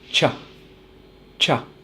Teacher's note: teeth at the back close together and lips almost closed but instead of having a steady flow of air coming through our mouth instead we are going to do one strong puff of air and also open our mouth a little bit at the end